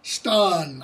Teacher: the old english vowel long ah in northern it stays long ah